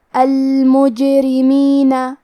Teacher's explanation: کلمت المجرمین میں کیونکہ جیم پہ جزم ہے لہذا یہاں جیم کا حکم ہے قلقلہ. قلقلہ کا معنی ہے حرف ساکن کو ہلانا، تو ہم جیم کو ہلاتے ہوئے یہ کلمہ کو پڑھیں گے · را کا حکم ہے ترقیق، ہم حرف الرا کو پتلی آواز میں پڑھیں گے